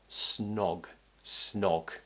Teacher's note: and then we're cutting it out with a n sound snog the o sound requires a round shape with the mouth we slightly pull the tongue back